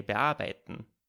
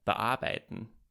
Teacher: A prefix might be separated from the rest of the word by a glottal stop, if it's followed by a vowel